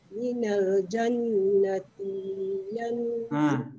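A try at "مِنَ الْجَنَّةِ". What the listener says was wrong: Ti tak ada panjang kan? Yang ti itu cepat ke depan. tengok ujungnya. Kalau tak ada mat, jangan lama-lama. Nanti jadi mat tak ada.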